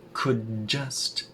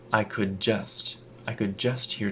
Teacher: that duh at the end of could connects to the J at the beginning of just